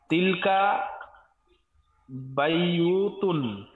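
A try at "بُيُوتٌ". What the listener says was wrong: বুয়ুতুন, বায়ুতুন না বুয়ুতুন,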